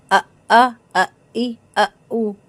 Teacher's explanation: حمزہ کی آواز حلق کے آخری حصے سے آئے گی